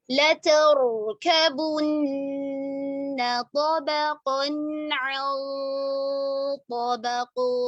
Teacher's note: तो के मखरज के करीब ले जाकर नून की आवाज को नाक में छुपाएंगे, गुन्ना करेंगे और साथ में मोटा करेंगे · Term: मोटा इख्फा